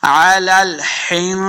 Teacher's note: सा को नरमी के साथ पढ़ेंगे, सीटी की आवाज़ और सख्ती यहाँ पे नहीं करनी। हिंसिल इख्फा लाजमी करना है, बाद लोग जल्दी में हिंसिल पढ़ देते हैं, हिंसिल पढ़ेंगे तो गुन्ना रह जाएगा, तो ये गलती है तजवीदी। · इख्फा का कायदा करना है, यानी गुन्ना करके पढ़ेंगे